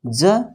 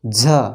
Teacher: ज नहीं निकली हवा, झ निकल गई हवा